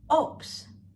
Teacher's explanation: Take note, the B in the word is pronounced as P.